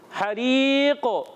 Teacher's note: قاف کو کلکلا بھی ہوگا